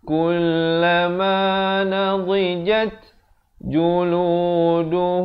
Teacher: Mimnya itu bibir tu atas dengan bawah hampir bersentuhan saja. Kalau tersentuh pun sedikit saja. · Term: ikhfa syafawi